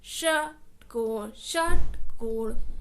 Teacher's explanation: और जो षटकोण वाला श होता है, उसमें हमारी टंग ऊपर टच करती है।